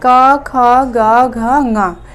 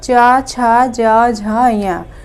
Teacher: तो स्पृष्ट प्रयत्न जो है स्पर्श वर्णों का होता है। स्पर्श वर्णों का जो अभ्यंतर प्रयत्न होता है वो स्पृष्ट होता है